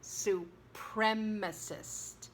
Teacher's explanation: you have a short E, and the accent is on the prem, supremacist